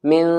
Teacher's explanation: ناک میں آواز لے جائیں گے کیونکہ یہاں پر اخفا ہو رہا ہے غنے کے ساتھ میں